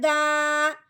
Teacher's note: اب دال کے اوپر کھڑی زبر آئی ہے، اب ہم نے دال کو ایک الف کے برابر لمبا کرنا ہے